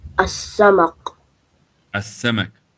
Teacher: The lam becomes silent. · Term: Shamsi